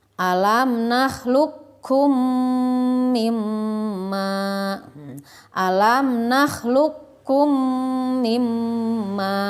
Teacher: Jadi huruf qafnya tidak terbaca, dilangsungkan saja ke huruf kaf. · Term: idgham mutaqaribain